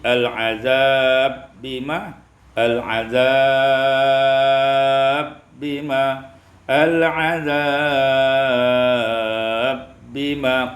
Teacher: Pada ayat yang ke-35 al-azaba bima, idghamul ba fil ba, diidghamkan ba pada ba menjadi al-azab bima